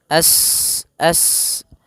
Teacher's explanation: Sin, yas, as, sifat sofirnya, sifat mengalirkan nafas atau berdesis seperti suara burung. As. Nah, dialirkan nafasnya juga, dia termasuk huruf hamas.